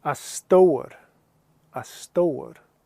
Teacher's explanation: So what's happening here is the FH is silent, and the T sound is carrying on to the O